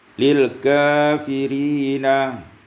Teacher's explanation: 24 lil kafirina taqlil fathah kaf wal lam